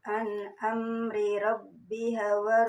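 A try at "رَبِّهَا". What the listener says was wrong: Rabbiha panjang.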